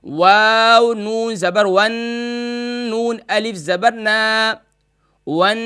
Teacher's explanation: تا زیر تی، من الجنتی، من الجنتی. واو زبر واو زبر وا نہیں ہوگا، بلکہ واو کو نون سے ملائیں گے